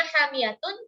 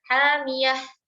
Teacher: Tapi ketika wakaf, maka tanwin itu akan hilang.